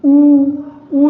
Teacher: उ जो है ओठ जो है गोल हो जा रहा है। यानी ये ओष्ठ है। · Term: ओष्ठ्य